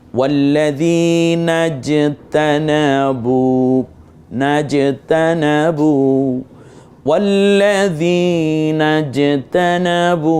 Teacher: যেহেতু জজম হয়েছে এজন্য জিমটা কলকলা করতে হবে